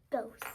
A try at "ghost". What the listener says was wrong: I almost sounded you like you said the C sound instead of G. Like coast instead of ghost.